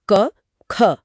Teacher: गले में कोई कंपन महसूस नहीं होगा। यह अघोष है।